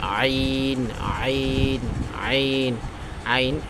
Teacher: জিহ্বার আগা সামনের উপরের দুই দাঁতের আগার সঙ্গে লাগাইয়া, আমরা আগে জোয়া জাল সা, জাল এখান থেকে পড়ছে, সা ওইখান থেকে, তাইলে জ জ জ জ, ঠিক আছে। তারপর আইন, এটা জানিস হলকের মধ্যখান হইতে উচ্চারণটা হয়